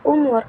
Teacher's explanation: dan yang ketiga fokal belakang contohnya u seperti pada kata umur lidah berada di belakang dekat dengan langit-langit lunak dan bibir dibulatkan